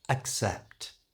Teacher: For this you need a strong ah sound at the beginning, so really open your mouth